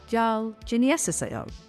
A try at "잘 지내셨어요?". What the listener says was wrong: Much closer. Smooth it out now. Same phrase, no big pauses.